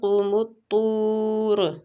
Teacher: قاف مستعلیہ حروف ہے، پور پڑھیں گے۔ قوم الطور، تو پر حروف ہے مستعلیہ، اس کو پور پڑھنا ہے اور را زبر کی وجہ سے پور کرنا ہے، ٹھیک ہے۔